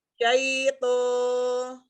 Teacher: Jadi dia kayak nyangkut barengan, pangkal lidah naik, ujung lidahnya dibenturkan di tempat tumbuh gigi itu ya, di yang gusi yang atas